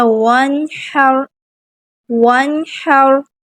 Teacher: نون ساکن، اس کے بعد حا آ گیا، وانحر، یہاں پہ بھی کیا ہے؟ ہم ظاہر کریں گے، غنہ ہرگز نہیں کریں گے